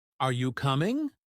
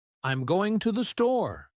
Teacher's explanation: In American English, we tend to use a rising intonation for yes or no questions · we tend to use a rising intonation for yes or no questions like, Are you coming? But for statements, we use a falling intonation